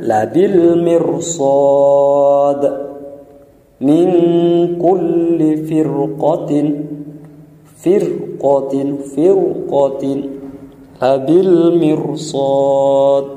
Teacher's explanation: Walaupun ro ini didahului harkat kasrah tapi bertemu dengan huruf isti'la, maka bacaannya tetap dibaca tebal. Kenapa? Karena bertemu dengan huruf isti'la.